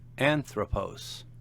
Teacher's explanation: Notice the accent on the antipenult or third to last syllable.